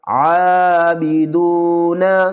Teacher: واو مدہ ہے، 1 الف کی مقدار کھینچ کر پڑھیں گے، عین کو بھی 1 الف کی مقدار کھینچ کر پڑھیں گے